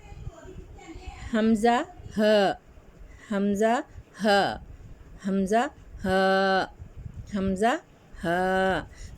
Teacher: حلق کے آخری حصے سے ادا ہوتے ہیں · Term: حمزہ اور ہا